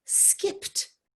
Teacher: Now skipped has ed at the end, but it really makes the t noise.